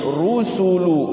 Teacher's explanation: ro-nya dibaca tafkhim, ru ya